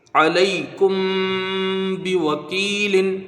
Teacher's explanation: میم ساکن ہے، اور میم ساکن کے بعد با ہے تو یہاں اخفاء شفوی ہوگا، ایک الف کی مقدار غنہ کریں گے